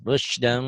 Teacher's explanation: Rusdan bunyi M. Rusdan bunyi M tapi bindeng. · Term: ikhfa